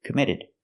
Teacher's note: We hear the double T in committed pronounced as a fast D. It's between vowels.